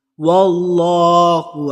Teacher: اللہ کی لام کو اسی لیے پر پڑھا کیونکہ اس سے پہلے والے حرف پر زبر ہے. صرف اللہ کی لام کو ہم نے پر پڑھنا ہے کیونکہ اس سے پہلے والے حرف پر زبر ہو.